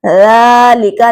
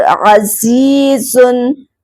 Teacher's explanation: लाल हर्फ नरम अदा होने के साथ साथ बारीक अदा होगा और जा हर्फ सीटी वाले हर्फ में से है।